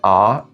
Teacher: when you pronounce the sound ah, your tongue position is very low